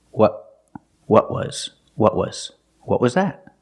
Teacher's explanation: The tongue stays down because I stop the air in my throat. I tighten my throat to stop the air.